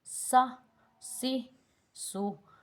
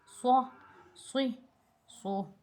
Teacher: سین جو ہے وہ تھوڑا سا سختی سے پڑھا جائے گا اور صاد جو ہے منہ کو گول کر کے پر کر کے پڑھا جائے گا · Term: موٹا حروف